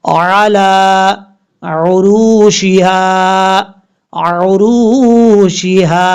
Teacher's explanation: را کے بعد واو مدہ، ایک الف کی مقدار لمبا کر کے پڑھیں گے